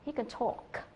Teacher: Tôi lấy ví dụ như trong cái câu là he can talk thì các bạn sẽ nghe thấy người ta không nhấn vào cái từ can và chỉ nghe thấy cái từ talk rất là rõ